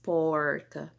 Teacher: a ponta da minha língua, ela meio que dobra para trás, né, ele faz um movimento para trás mesmo, dá uma ré, né? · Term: retroflexo